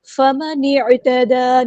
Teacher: نون کو ہم نے عین کے ساتھ ملا دینا ہے، حمزۃ الوصل ہمارا ڈراپ ہو جائے گا ، عین کو وسطی ہے لیکن مڈل تھروٹ سے ادا کریں